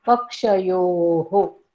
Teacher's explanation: आता ह्या पक्ष योच्या पुढे विसर्ग आहे, त्याचा आपण स्पष्ट उच्चार करणार आहोत. पक्षयोः. त्या विसर्गाला कुठेही मिळवायचं नाही, कारण पुढे पूर्णविराम आहे.